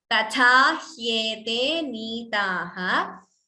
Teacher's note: Please note, first tha is alpaprana, only second tha is mahaprana.